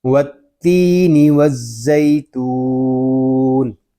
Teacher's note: یہاں مد عارض اس لیے ہوگا کہ واو مدہ کے بعد عارضی سکون آ گیا ہے۔ واو تا واو زبر وا، تو واو پیش تو وا تو، تو حروف مستعلیہ میں سے ہے، اس کو پر پڑھیں گے، یہاں واو مدہ بھی ہو رہا ہے اور تو کو ہم ایک الف تک کھینچ کر پڑھیں گے.